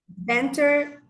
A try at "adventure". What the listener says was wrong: It has to sound like ch, teacher. So it has to sound chair, future, furniture, adventure, nature, picture, rupture. So there's no T, it's ch.